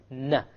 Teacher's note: you connect the tongue to the molar behind the canines you have the noon